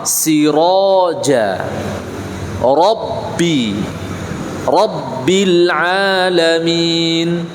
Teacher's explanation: ketika ro berharokat fathah, maka dibaca tafkhim, tidak boleh dibaca tarkik